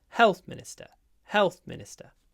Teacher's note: Because it's a compound noun. The second word becomes unstressed.